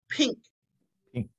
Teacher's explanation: That N there in the word pink, the back of my tongue goes straight up.